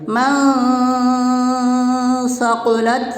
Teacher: نون ساکن کی آواز کو ناک میں چھپا کر پڑھیں گے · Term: اخفا